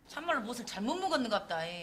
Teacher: One characteristic of the Jeolla dialect is to speak a little fast and drag the last syllable while raising its accent.